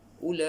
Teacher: ulaika ini ialah mad wajib muttasil, kena baca 6 harakat